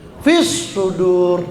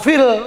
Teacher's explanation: Cirinya alnya itu l-nya itu lamnya enggak kedengaran bunyinya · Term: Alsamsiyah